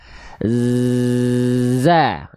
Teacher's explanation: Oke, jadi huruf zai itu punya sifat namanya adalah sofir. Karakteristik desisnya atau sofir itu desis, karakteristik desisnya seperti lebah